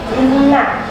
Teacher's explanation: Cara bacanya berdengung serta ditahan selama 3 harakat. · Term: guna